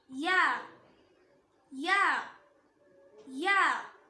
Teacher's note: நாக்கோட நடுப்பகுதி மேல் முரசை டச் பண்ணும்போது ப்ரொனவுன்ஸ் பண்ணணும்